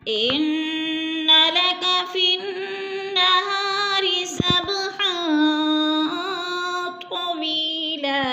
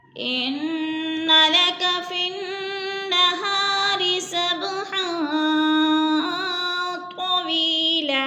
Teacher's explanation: इन्ना की नून मुशद्दद है, गुन्ना करेंगे, नाक में आवाज़ से ले जाएंगे